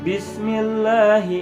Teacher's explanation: Karena sin itu mempunyai sifat desis gitu, seperti desisan ular gitu ya.